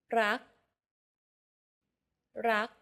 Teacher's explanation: do you notice how air in the final k sound is not expelled